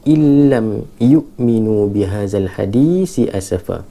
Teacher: idgham bila gunnah illam, dia tak ada dengung sangat. Illam yu'minu bihadzal hadisi asafa.